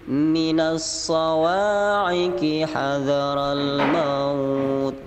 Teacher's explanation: Jadi mim ketemu mim itu idgham mimi. Jadi idgham pada huruf mim ditekan.